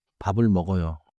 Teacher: 밥 has a final 비읍. 을 starts with a vowel sound. So the 비읍 becomes the first sound of the next syllable in pronunciation. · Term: linking